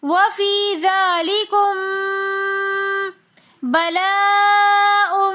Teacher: मीम साकिन के बाद आगे बा रही है, तो हम यहाँ पर भी इख्फा करके पढ़ेंगे। वफ़ी ज़ालिकुम बलाउम, यहाँ पर बलाउम में मद्दे मुत्तसिल हो रही है, तो उसको हम 5 से 6 अलिफ की मिकदार खींच कर पढ़ेंगे।